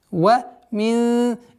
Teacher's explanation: ихфа, мягкая ихфа, в размере 2 огласовок удерживаем назализацию.